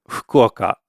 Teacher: It's not really an F sound like it is in English. It almost sounds a little more like you're just kind of blowing out air like H.